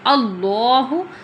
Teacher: پیش کو ہم جلدی پڑھتے ہیں، تھوڑا بھی نہیں کھینچتے